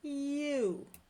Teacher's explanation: And in you, we start with a smile and go to round